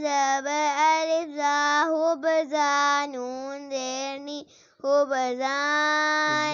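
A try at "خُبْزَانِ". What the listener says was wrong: زا پہ اب سیٹی نہیں. زا پر سیٹی نہیں کرنا.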